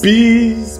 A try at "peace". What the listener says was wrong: Not please, it's peace.